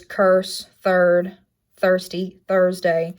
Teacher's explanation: its placement is mid central rounded and tense and it only happens in the stressed syllable placement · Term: right hook reversed epsilon